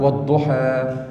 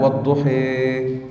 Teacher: الفتحة ليست فتحة البناء، لا، الفتح هنا يقصد به فتح المخرج، والضحى والضحى هذا فتح. الإمالة تقرب الألف إلى الياء، ليست ياء خالصة، وتجعل الفتحة كسرة قريبة للكسرة